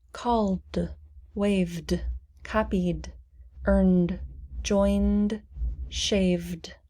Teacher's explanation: the ed is pronounced de which is also a vibrating sound